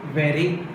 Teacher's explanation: There is only one tap of the tip of the tongue against the teeth ridge. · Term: flop